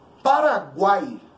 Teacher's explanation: Eu tenho aí as três últimas letras, né? Uma semivogal, uma vogal e outra semivogal, pronunciadas juntas. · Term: tritongo